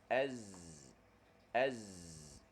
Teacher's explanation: hujung lidah kita tu dia ke belakang gigi kecil bawah dan Gigi kita merapat · bila kita rapatkan gigi dia akan hasil bunyi dia panggil bunyi safir ataupun bunyi siul kita kata bunyi macam bunyi bersiul tulah itu dalam istilah tajwid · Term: Sin Zai dengan S